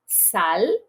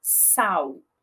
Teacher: tenho tanto ela velarizada, l, sal, quanto a variante vocalizada, sal